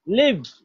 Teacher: লাইভ বললে তো আই হয়ে গেল, উচ্চারণটা হচ্ছে ই।